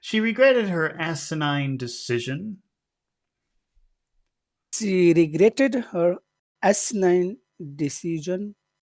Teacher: we're also going to have to go low by the time we get to decision